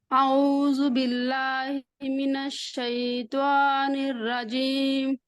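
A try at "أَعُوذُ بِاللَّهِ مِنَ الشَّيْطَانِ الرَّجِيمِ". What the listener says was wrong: इसमें दो गलतियां हैं। एक अऊज़ु में हमजा और आइन की अलग अलग आवाज आनी चाहिए। अऊज़ु, अऊज़ु। ये आइन को भी अब हमजा की तरह पढ़ रही हैं। अऊज़ु। ठीक है, आइन आपका ठीक नहीं है, बहरहाल इसको आपने ठीक करना है, इसकी प्रैक्टिस करनी है, आगे चलें।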